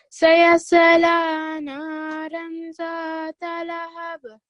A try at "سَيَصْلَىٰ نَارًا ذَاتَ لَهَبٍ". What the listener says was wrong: Okay, and don't pronounce the swat with the kalkala because it came through as a bit of a kalkala from you.